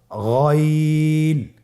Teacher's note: গাইন হরফটি মোটা হারাফ অবশ্যই একটু মোটা করে বলতে হবে